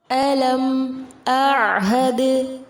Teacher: علم اعہد میم ساکن کے بعد حمزہ ہے، یہاں اظہار شفوی ہوگا. حمزہ اور عین میں فرق کو واضح کرنا ہے. · عین کو وسط حلق سے ادا کیا جائے گا، دال ساکن پر قلقلہ ہوگا